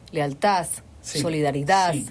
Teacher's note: lo que pasa cuando la D está al final de una palabra que se transforma en TH